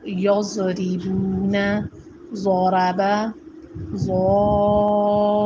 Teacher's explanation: ضا کی آواز موٹی اور نرم ہوتی ہے. ضاد کی آواز بہت موٹی اور نرم تو ہوتی ہے لیکن جماؤں کے ساتھ نکلتی ہے